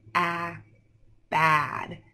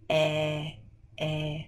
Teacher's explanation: when I say bad my mouth is open a bad when I say bed mouth is closed